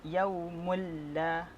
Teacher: Hukum bacaan di sini adalah idgham bila gunnah. Idgham bila gunnah, bacaannya tanpa dengung, memasukkan bacaan terus masuk ke dalam huruf lam